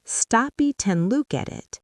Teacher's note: The P jumps to the I. The T jumps to the A. The K jumps to the A. The T jumps to the I.